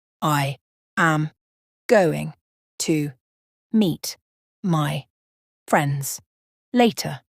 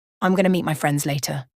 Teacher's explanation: I am contracts to I'm going to changes to gonna